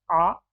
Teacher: आ इसका उच्चारण पश्च से ही होता है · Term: पश्च स्वर